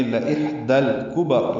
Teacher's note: ہا وسط حلق سے ادا کریں گے، اس پہ ہمس بھی ہوگا، یعنی سانس جاری رکھیں گے اس کے پڑھتے ہوئے